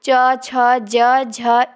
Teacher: छ ध्वनि का उच्चारण स्थान है तालव्य। च वर्ग में आएगा ना, च छ ज झ इया।